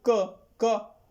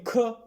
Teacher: आप बोलेंगे ख, देखिए कितनी तेज प्रेशर से निकल रहा है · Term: महाप्राण